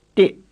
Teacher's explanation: It's not an English T or an English D, but the foreign sounding plain T